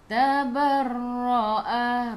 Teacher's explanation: Tekan ke dalam ra ada sabdu. Sifat huruf ra takrir kena ada bunyi juga, getaran.